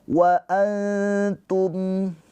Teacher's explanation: Cara bacanya nunnya dibaca dengan samar ditahan dua harakat. dengan cara lidah kita mendekat ke huruf ta. Mendekat, jangan ditempelin. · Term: ikhfa hakiki